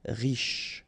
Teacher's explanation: final E not really pronounced, so sh is the last sound